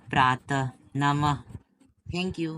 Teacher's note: विसर्ग। उच्चारण जो है ह के समान होता है